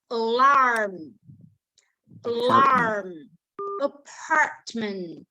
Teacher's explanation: cái lưỡi của mình ấy, nó sẽ thụt vào trong cái họng của mình và cái đầu lưỡi của chúng ta sẽ không có chạm vào đâu, và chúng ta sẽ tạo nên một cái âm thanh như mà một cái con bò nó hơi giống lên đấy.